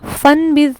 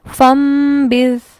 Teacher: فن نون کے ساتھ نہیں پڑھتے بلکہ میم کے ساتھ